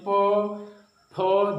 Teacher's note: जब भी प फ बोल रहे हैं तो यह ओठ सट रहा है, फिर उठ रहा है, इसलिए यह ओठ से हो गया। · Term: ओष्ठ